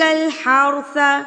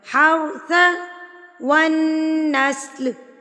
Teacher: را ساکن اور را ساکن سے پہلے زبر، تو را یہاں پر موٹا یعنی کہ پر پڑھا جائے گا